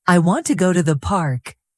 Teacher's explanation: The strong beats are on want and park. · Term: word stress